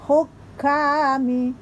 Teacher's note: Hukami, kaf 2 harokat, namun karena ada tasdid ditekan dulu